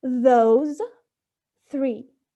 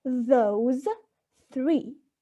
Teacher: an interdental sound is articulated by putting the tip of the tongue between the upper and lower teeth